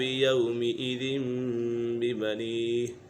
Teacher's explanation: نون سکین اور تنوین کو میم سے بدل کر اخفا کریں گے، یعنی غنہ کر کے پڑھیں گے تو یہاں پر غنہ ہوگا۔ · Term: اقلاب